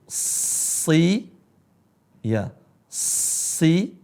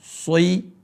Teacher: Bibir saya tetap seperti biasa. Tidak berubah menjadi O seperti so.